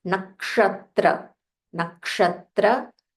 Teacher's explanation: This is ksha. There is a k, first k and then ksha, the murdanya sha. So you'll have to roll your tongue.